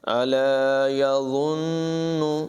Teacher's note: ضا جو ہے اس کی آواز پر ہوگی اور اس کو بغیر سیٹی کے پڑھیں گے، نون میں غنہ ہوگا